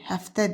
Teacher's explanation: Həftə dediyimizə görə də vurğu 1-ə yox, ikinci hecaya düşür.